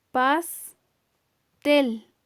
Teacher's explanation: Si escuchamos bien, el acento lo tiene en la última sílaba. Esa también entonces se llama palabra aguda porque tiene la mayor fuerza de voz en su última sílaba.